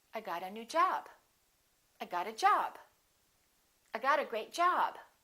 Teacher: job gets more stress because it's a second word